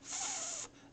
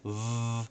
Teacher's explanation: The F sound has no voice. It's just f. The V sound has the same place where you put your mouth, but you also add voice, so it's v.